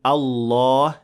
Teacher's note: the lam in Allah is of course full mouth, so we say Allah, not illah.